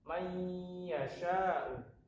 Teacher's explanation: Maksudnya adalah ketika dia masuk ke huruf ya, dia ditahan. Jadi tidak keburu-buru melepaskan. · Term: idgham bi gunnah